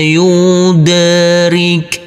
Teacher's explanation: Huruf dal jangan lupa kita pantulkan karena ini adalah bacaan qalqalah